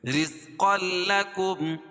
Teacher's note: یہ را باریک ہوگی کیونکہ را کے نیچے زیر ہے